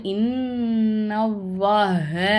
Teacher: அல்லாஹுங்கிற வார்த்தையை நான் வல்லினமாக உச்சரிக்கணும், வாய் நிறைய காற்று வச்சு உச்சரிக்கணும்